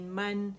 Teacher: فتح کے لیے آواز ایک کاؤنٹ کے اوپر جائے گی اور پھر وہ نون سے اوپر جا کے ملے گی، یعنی جبڑا کھلے گا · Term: میم فتحتین